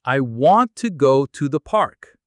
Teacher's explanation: Notice how want is strong and how to is softer almost like to.